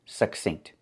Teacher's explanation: I prefer to pronounce it succinct with that stop K, because it goes along with the other words that have the similar spelling.